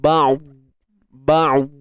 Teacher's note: Huruf dad dia tebal tetapi tidak lantun.